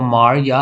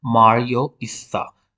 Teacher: The second low back unrounded vowel a will change to o. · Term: dissimilation